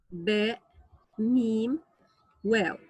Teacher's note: The articulation point of the letters ba, mim, waw. These 3 letters are articulated from the 2 lips.